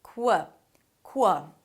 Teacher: It's a K sound and a W immediately.